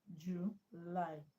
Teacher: So July, the stress is on lie, not June.